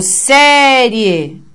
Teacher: Vejam que a gente estende o som do sé em série. E aí o rie vem de uma vez. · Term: sílaba tônica